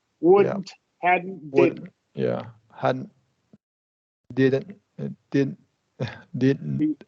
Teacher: going straight from the D to the N that's critical and not releasing the D · technically you're supposed to do a stop T also so you're not supposed to release anything but that's super difficult and releasing the T kind of like